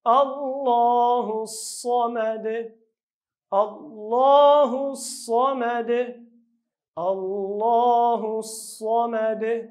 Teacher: صاد په ډک اواز، آخر کې قلقله.